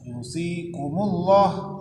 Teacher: lafzul jalalah didahului baris dhammah, itu dibaca tebal